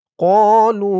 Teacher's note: ক এক আলিফ টান লু ৩ আলিফ টান মধ্যে মুনফাসিল।